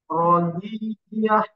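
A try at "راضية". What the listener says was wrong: Ronya ada alif panjang.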